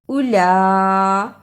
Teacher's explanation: لام پر کھڑی زبر اور بڑی مد ہے، اس کو صحیح ادا کرنا. بڑی مد کو ادا کرنے کا طریقہ: 4 بند انگلیاں باری باری کھولیں، اتنا لمبا کرنا ہے